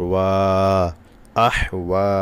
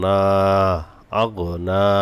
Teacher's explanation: খারা জবর মদের হরকত এক আলিফ টান হবে